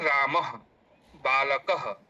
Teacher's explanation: इस तरीके से ह के समान इनका उच्चारण होता है। इनका उच्चारण स्थान कंठ होता है। जैसे अकुह विसर्जनीयानाम कंठः, तो विसर्ग है तो उसका उच्चारण स्थान कंठ होगा।